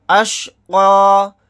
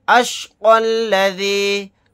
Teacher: اگر یہاں پر ہم آیت نہیں کرتے تو پھر قاف کو لام میں ملائیں گے